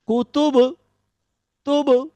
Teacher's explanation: এটির নাম হচ্ছে কলকলা করে পড়া। মানে হচ্ছে প্রতিধ্বনী হওয়া। ও আবার রিপিট শব্দ করবে।